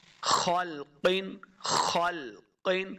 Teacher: خا اور قاف دونوں یہ حروف مستعلیہ سے ہیں تو ان کو موٹا کر کے پڑھنا ہے